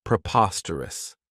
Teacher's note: This adjective has 4 syllables, and the stress is on that second syllable